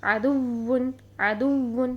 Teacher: آواز کو اس طرح سے اٹھائیں گے جس طرح ہاتھوں کو کلیپ کرنے کے لیے ہاتھوں کو زور سے ٹچ کرنا پڑتا ہے اور پھر آواز میں اٹھاؤ پیدا ہوتا ہے جس سے کلیپنگ ہوتی ہے۔ تو اسی طرح پچھلے حرف کی حرکت کو فوراً واو مشدد اور یا مشدد کے ساتھ ٹچ کرنا ہے، اس میں ذرا سا بھی ٹائم نہیں لگانا، جس سے کہ آواز میں اٹھاؤ پیدا ہوگا۔ · واو مشدد اور یا مشدد کو ادا کرنے کے لیے آواز کو اٹھائیں گے، یعنی نبر ہوگا۔ نبر آواز کو اٹھانے کو کہتے ہیں۔